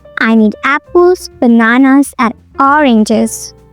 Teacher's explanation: Okay, so here you have to notice one thing, that when you are listing items, then you have to use rising intonation for all items except the last one. It should have a falling intonation to signal the end of the list.